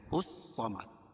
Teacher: دال پر قلقلہ ہوگا وقف کی حالت میں · الف لام کے بعد حروف شمسی کے 4 حرفوں میں سے صاد ہے، تو یہاں لام نہیں پڑھی جا رہی ہے. اور اس کے بعد ہا کو صاد میں ملائیں گے الصمد.